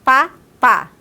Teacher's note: labial porque eu utilizo o lábio superior eo inferior o Papa então eu utilizo os dois lábios e por isso que ele é bilabial